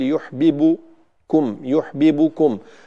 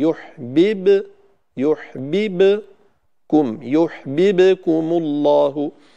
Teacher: يحببكم، البعض هنا عندما يقلقل الباء يضم الشفتين فيقول يحببكم، يحببكم، فتظهر الباء كأنها مضمومة أو فيها جزء من حركة الضمة، وهذا خطأ. الباء الساكنة هنا لا ينبغي أن نعطيها صوت ضمة، فنعيد الفم إلى وضعه الطبيعي